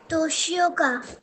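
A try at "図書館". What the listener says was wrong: Last वाला भूल गए आप.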